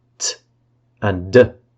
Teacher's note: T and d are alveolar plosives.